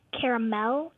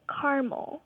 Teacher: Dad pronounces it with three syllables and she pronounces it with two